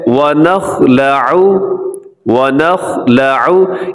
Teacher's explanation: اس میں خا موٹا پڑا جائے گا, باقی جو چاروں حروف ہیں وہ باریک ہے. وا نہیں کرنا, وا موٹا, نو یہ بھی درست نہیں ہے.